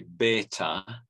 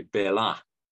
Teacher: the Christian Urmi, the th has gone to a t, and then Jewish Urmi, the th has gone to an l, a lateral.